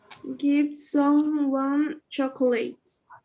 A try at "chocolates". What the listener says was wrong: chocolates. And this one, you don't pronounce the O. The O is very soft, or maybe it's silent. Chocolates. Chocolates, no O. Chocolates. Chocolates. Chocolates. there's no O here. Chocolates. Chocolates. Give someone chocolates.